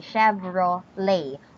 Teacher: So Chevrolet, there is no T sound.